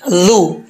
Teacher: زبان کی نوک اوپر والے دانتوں کے نچلے حصے سے لگے گی تو یہ ذال پڑھا جائے گا